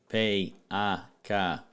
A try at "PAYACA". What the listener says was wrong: It was a very long drawn out pronunciation, but yeah, PAYACA, PAYACA.